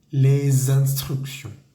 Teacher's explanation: la s que termina de la palabra les con la i que comienza de la palabra instrucción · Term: conexión Sonora